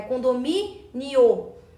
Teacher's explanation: Condomínio é uma paroxítona, porque tem a penúltima sílaba tônica, que é o mi